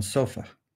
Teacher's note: the upside down E symbol is schwa when it's unstressed, like the last vowel in sofa